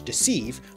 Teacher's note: English deceive with an /i/ pronunciation